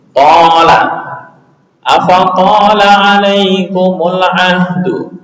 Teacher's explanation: th ditambah alif maka alif mengikuti ketebalannya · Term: tafkhim